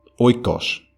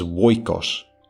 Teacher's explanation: the earlier form of the word as having a W, which the Attic dialect later dropped.